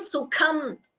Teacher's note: Sukham, kha is Mahaprana. Please chant that clearly.